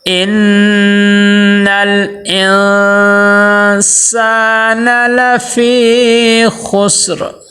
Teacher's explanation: ان نون مشدد ہے، نون مشدد پہ کیا کرنا ہے؟ غنہ کرنا ہے۔ اور آگے نون ساکن ہے، نون ساکن کے آگے حروف اخفا میں سے سین آ گیا ہے، وہاں پہ بھی غنہ کرنا ہے، لیکن یہاں پہ دیکھیے دونوں غنوں میں فرق ہونا چاہیے۔